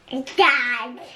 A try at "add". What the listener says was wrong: Add. Add. Not dad, because there's no d at the beginning, is there? What's this sound at the beginning? Add. Add. Add. Yeah, this is add, isn't it? A and d. Add. Add.